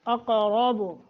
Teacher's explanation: قاف کو موٹا را کو موٹا قاف پہ قلقلہ بھی کرنا ہے